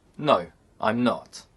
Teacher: in short answers the intonation Falls